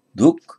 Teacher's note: So taking it now to the locative plural from du. The h changes to a k, so that aspirates the preceding dh, so it becomes dhuk.